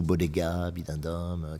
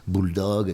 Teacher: il y a une toute petite ouverture d'air qui fait que quand le B vient exploser, il explose de façon élastique. Il explose avec une forme de souplesse, quoi. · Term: plosives sonores